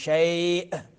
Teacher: हमजा आखिर में है तो झटका देंगे